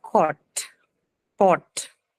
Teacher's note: another mid vowel that you have here is the back mid vowel, which is O. This one is found in words like cot, pot.